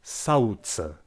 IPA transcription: saɯ̯ce